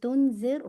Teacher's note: را کو ہیوی نہیں کیے گا، ہیوی نہیں کیجیے گا. تنذر ٹھیک ہے، را لائٹ رکھیے گا ٹھیک ہے.